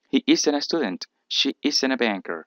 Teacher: en el inglés americano, muchas veces suele omitirse la T cuando está entre N y vocal